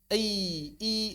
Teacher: mengucapkan ya, konsonan ya, maka sama dengan mengucapkan vokal i. Lidahnya diangkat. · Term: semivokal